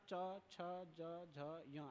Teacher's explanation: च उच्चारण करते समय आपका जो जीभ है ऊपर तालु में जाके टकराता है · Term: तालव्य